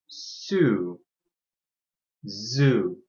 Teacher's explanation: They are both fricatives. We slow the air coming out of our mouth by putting our tongue on the roof of our mouth.